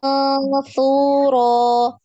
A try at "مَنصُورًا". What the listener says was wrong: Su-nya jangan terlalu panjang.